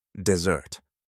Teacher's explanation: This time the stress is on the second syllable.